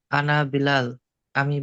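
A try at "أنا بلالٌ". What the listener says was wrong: আনা বেলাল, বেলাল শেষে কি আছে? বেলাল শব্দের শেষে তানবির আছে না?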